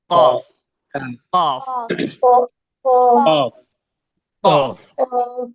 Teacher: قاف کا مخرج زبان کے پچھلے حصے یعنی زبان کی جڑ اور سافٹ پلیٹ سے ادا ہوتا ہے